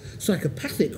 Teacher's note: psychopathic with a stress on the third